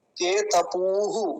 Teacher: केतपूः लंबा खींचेंगे क्योंकि पकार पर दीर्घ ऊकार है, बड़े ऊ की मात्रा है।